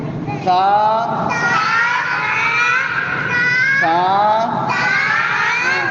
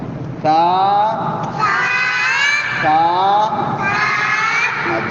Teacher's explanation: تا پہ زبان اوپر کے دو دانتوں سے ٹچ کر کے، زبان کی نوک اوپر کے دانتوں کو لگا کر سیٹی کو بند کرنا ہے